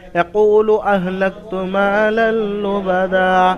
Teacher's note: মা লাল লুবাদা, লামের উপরে দুজাবারকে তানমিন বলে, আর তানমিনের পরে এখানে লাম এসছে, অর্থাৎ ইদগামে বেলাগুন্না। হ্যাঁ, তানমিন নুন সাকিনের পরে র এবং লাম আসলে ইদগামে বেলাগুন্না বিনা গুন্নায় জাহির করে পড়তে হবে, অর্থাৎ লাম তাড়াতাড়ি পড়বেন